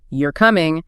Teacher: If I say it with a falling tone at the end, you're coming, it's a statement.